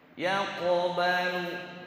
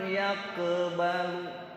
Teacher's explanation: Qaf fathahnya qa, maka bunyi qalqalahnya qa.